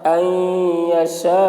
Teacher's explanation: نون ساکن کے بعد حروف یرملون میں سے یا آ رہا ہے، اس لیے نون کو یا سے ملا کر غنہ کے ساتھ پڑھیں گے، اس کو ادغام ناقص کہتے ہیں۔